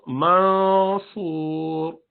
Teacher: زبان کو نیچے نہیں رکھے رہنے دینا، زبان کو اوپر ہونا چاہیے، جہاں اگلا حرف نکلنے والا ہے اس کے قریب چلے جانا چاہیے · مثلا منصور، دیکھیے آخر میں وہ راؤنڈ ہو جاتا ہے، تھوڑا سا ایسا لگتا ہے، کیونکہ صاد کے لیے ہمیں زبان کی جڑ اٹھا کے اس کو راؤنڈ پڑھنا ہے، بھاری پڑھنا ہے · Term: اخفا